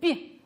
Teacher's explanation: Произносим звук «би». Согласный, звонкий, мягкий.